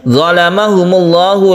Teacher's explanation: lafzul jalalah yang kita baca tebal atau tafkhim karena sebelum lafaz Allah ini ada dhammah